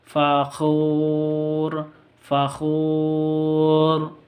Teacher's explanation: tanwin bertemu dengan Fa samar didengungkan ikhfa Hakiki · wau sukun terus sebelumnya domah berarti panjang awalnya panjangnya dua harakat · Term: mad asli